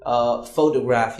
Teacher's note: when you say photograph, you stress on pho and not the other syllables like toe and graph.